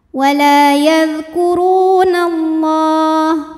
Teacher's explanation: la mad tabi'i muqaddar karena ada baris fathah tegak di atas huruf lam. Cara bacanya panjang 2 harokat.